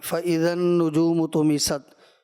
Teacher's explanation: نون مشدد کا جو غنہ ہے تو اس میں آواز ناک میں بھی جائے گی لیکن زبان تالو سے بالکل چھپک جاتی ہے